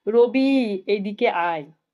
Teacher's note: এখানে দূর থেকে ডাকার জন্য এই হ্রস্বই টাকেই আমরা দীর্ঘ টেনে উচ্চারণ করেছি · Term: প্লুতস্বর